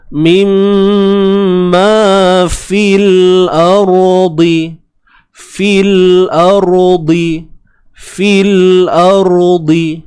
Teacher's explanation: Kerana adanya iltiqa sakinain, pertemuan 2 sukun di sini, ya dengan lam ni lah. Jadi ya ni dihilangkan bunyinya, maka tinggal fa sahaja, terus masuk pada lam yang mati di sini.